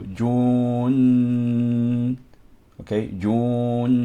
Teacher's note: And we have ghunna in nun, because nun is a letter of ghunna.